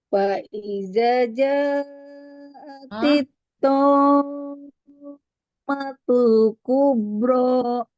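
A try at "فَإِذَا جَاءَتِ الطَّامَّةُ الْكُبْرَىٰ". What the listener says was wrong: Da-nya panjangin, Ibu. Faiza.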